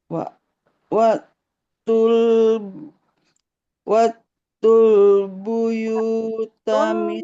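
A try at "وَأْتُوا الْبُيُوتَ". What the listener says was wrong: Tuh. Wa. Nah, hamzah sukun harus ditekan. Wa. Hul. Wa. Hul.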